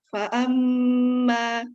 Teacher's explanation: di situ ada gunnah, ditahan 2 harokat.